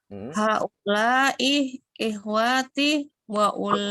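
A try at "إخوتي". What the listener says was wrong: Ikhwati. Wa-nya enggak panjang, Bu. Ikhwati.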